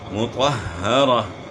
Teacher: طا کو موٹا کرنا ہے اور ہا کے ساتھ ہم جو ہے ملائیں گے، طا کو، ہا مشدد ہے اور ہا کی آواز گلے کے آخر سے نکالیں گے